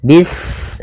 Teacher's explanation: Pada bacaan bis ini sempurnakan huruf sinnya. Ketika sinnya sukun, ini ada sifat shafir, dia harus kita alirkan nafasnya. Bis, nah seperti itu sempurna, baru baca mi.